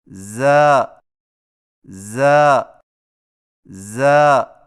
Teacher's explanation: زا کی ادائیگی میں زبان کی نوک کو ثنایا سفلی کے کناروں سے مضبوطی سے لگا کر باریک اور سیٹی جیسی آواز میں پڑھیں